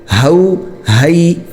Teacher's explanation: ہا واو زبر ہو، یہ ہا جو ہے وہ نارمل ہا نکلتا ہے، اس کو حلق سے نہیں نکالنا بلکہ نارمل ہا۔